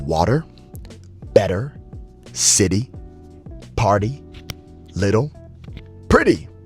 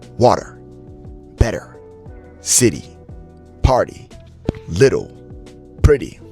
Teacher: American T between vowels sounds like a soft D. Every time you come across an American T that is in between vowels, I'm not going to say all words, but words that the attention is not brought to the T has a flap T sound.